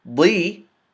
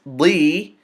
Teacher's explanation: we have to elongate it to two movements